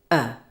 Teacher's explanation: your tongue is low and Central jaw is neutral and lips relaxed and neutral